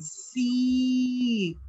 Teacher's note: Now remember, when you see two E's together, the sound is E. It's a long E sound, as if you are stretching the E. You're stretching it apart.